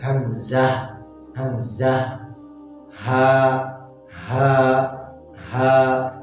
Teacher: हरफ के गले के उस हिस्से से निकल रहे हैं जो सीने की जानिब है